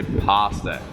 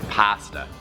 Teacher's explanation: in American English, people say pasta. They would like elongate the A.